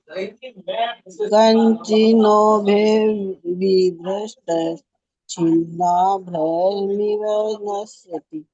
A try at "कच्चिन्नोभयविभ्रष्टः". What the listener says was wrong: आपने कंचिन्नो बोला, कंचिन्नो नहीं है, कच्चिन्नो भय विभ्रष्ट। कच्चिन्नो भय विभ्रष्ट।